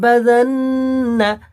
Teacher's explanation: বাযান্না এই নুনের উপর তাসদিদ এসেছে, একালিপ গুণ্য হবে